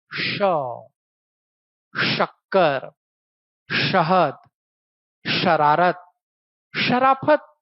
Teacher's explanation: तालव्य से कहा आ गया है, उष्म वाले टोली में। कारण इसको बोलने का तरीका ऐसा है कि जीभ को मोड़ के तालू की तरफ ले जाना है